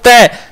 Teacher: जीभ का स्पर्श हो रही है दांतो के लग रही है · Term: दंत वर्ण